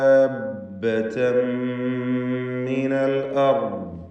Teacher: ദാബ്ബതൻ മിനൽ അർദ്, ഇവിടെ ദാബ്ബതൻ തൻവീൻ വരുന്നു, ശേഷം മീമ് വരുന്നു. തൻവീനിനെ പൂർണ്ണമായി മീമിൽ ലയിപ്പിച്ച് മണിക്കണം. ഇദ്ഗാം ബിഗുന്ന കാമിൽ, അങ്ങനെ ഷദ്ദുള്ള ഒരു മീമ് മാത്രമാണ് ഉച്ചാരണത്തിൽ ഉണ്ടാവുക.